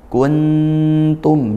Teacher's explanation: nunnya dibaca dengung karena dia ikhfa haqiqi, samar dan dengung.